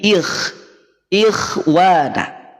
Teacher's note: dia terdengar lebih berkurang ketebalannya karena didahului oleh kasrah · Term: tafhim nisbi